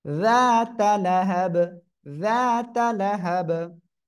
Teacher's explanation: জিহ্বার আগায় দুই দাঁতের আগার সঙ্গে লাগবে